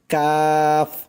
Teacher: জিহ্বার গোড়া হইতে একটু আগে বাড়াইয়া তার বরাবর উপরের তালুর সঙ্গে লাগাইয়া কাফ